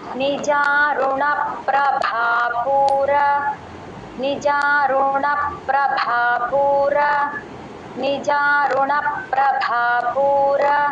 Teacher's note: ఆ రా దగ్గర దీర్ఘం లేదు ఎవరు ఇవ్వకండి